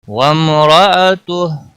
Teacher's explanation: میم پر اظہار ہوگا، گنہ نہیں ہوگا